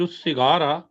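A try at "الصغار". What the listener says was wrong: کسرا کے ساتھ، سواد کے کسرے کے ساتھ۔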